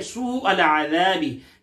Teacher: यहां मद्द मुत्तसिल है, वो मद्द के बाद हमजा उसी कलमे में है